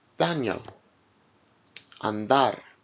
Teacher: D is similar to the English D, but it's pronounced with the tongue farther forward against the upper teeth.